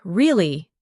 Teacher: when you ask a question like, Really? your voice goes up slightly at the end. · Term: intonation